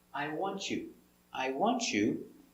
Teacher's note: I want you, with this T, Y sound, T, it changes to ch, ch, ch, like chicken.